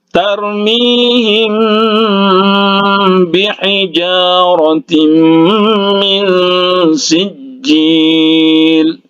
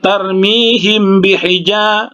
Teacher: Kemudian mim ya, ini mim mati bertemu dengan huruf ba, jadi itu ikhfa syafawi ya, ikhfa syafawi ya. Mim sukun bertemu dengan huruf ba, jadi dia itu didengungkan.